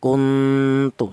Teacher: Jadi samar lebih dominan daripada dengung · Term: ifa a'la